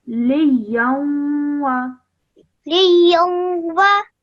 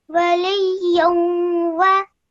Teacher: So you join the lam to the ya, and then when you join the ya to the waw, you produce a nasal sound in between for 2 seconds.